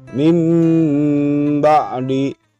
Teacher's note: mim ba'di nun mati bertemu dengan huruf iqlab berupa ba maka bunyi n pada nun mati harus diganti menjadi Bunyi m jadi n diganti m dan disertai dengan berdengung